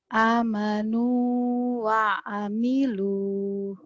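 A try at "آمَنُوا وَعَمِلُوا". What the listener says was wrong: A-nya panjang.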